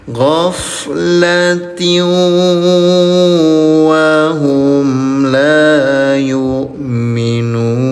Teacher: Jadi masukkan dulu, tempelkan dulu ke huruf wawu, bunyi tanwinnya, baru disertai dengung selama 2 rakaat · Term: idgham bi gunnah